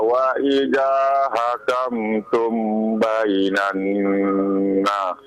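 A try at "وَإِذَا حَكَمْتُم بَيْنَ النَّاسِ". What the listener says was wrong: Wa idza hakamtum bainan nas. Panjang ya. Dipanjangkan. Coba ulang lagi. Wa idza hakamtum, ulang lagi.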